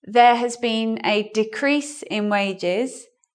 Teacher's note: So in this sentence, decrease is in the noun form. So looking at our rule, where is the stress here? On the first syllable.